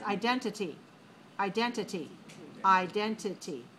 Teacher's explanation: 4 syllables, stress on the second.